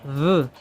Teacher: como un sonido de vibración como un como juntando los dientes superiores con el labio inferior